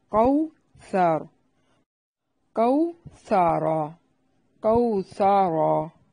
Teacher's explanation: سا کو نرم اور را کو موٹا کرنا ہے، وقف کی صورت میں بھی اور ملانے کی صورت میں بھی را کو موٹا پڑھنا ہے۔ کوثر کوثرا کوثرا، یعنی را کو ملانے کی صورت میں بھی اور وقف کی صورت میں بھی موٹا پڑھیں گے۔